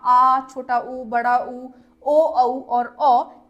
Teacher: पश्च स्वर होते हैं जिसमें जीभ का सबसे पिछला भाग काम करे